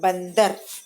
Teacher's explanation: जो ऊपर जो अनुस्वार है वो आधा न या आधा म की ध्वनि देता है। तो यहाँ देखिए ब है और नीचे देखिए आधा न, ब आधा न द र, बंदर, है ना।